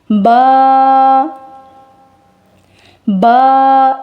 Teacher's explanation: با، با، ناک کے اندر آواز نہیں جائے گی